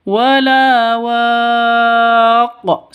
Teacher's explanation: Wala waq seperti itu disukunkan dan dipantulkan. Kenapa? Karena ketika qof sukun maka hukum qalqalah berlaku.